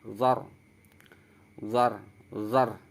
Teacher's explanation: Ketika ro berharokat sukun juga dibaca tebal, tafkhim. · ro ini termasuk golongan ro tafkhim, artinya ro yang dibaca tebal, zar. Tebalkan huruf ro-nya, zar, zar, zar.